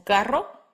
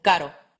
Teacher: R, the R trill, as in carro, and R, the R tap, as in caro.